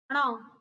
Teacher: जीभ हमारी जल्दी से ऊपर जाके नीचे आ जाती है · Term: उत्क्षिप्त व्यंजन